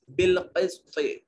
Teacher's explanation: قاف کو موٹا اور پر کر کے پڑھا جائے گا، طا کو موٹا اور پر کر کے پڑھا جائے گا کیونکہ صفت استعلاء موجود ہے دونوں میں